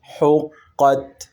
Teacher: قاف کو موٹا، تا کو باریک، اور یہ حروف حلقی میں سے ح ادا کریں گے۔